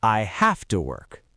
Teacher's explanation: The v sound in have physically transforms into an F